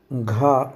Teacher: घा महाप्राण ध्वनि तो है ही, सघोष भी है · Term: सघोष महाप्राण